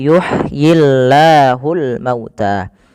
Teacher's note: lafal Allah bila didahului dengan huruf kasrah maka tidak boleh ditebalkan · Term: lam yang tipis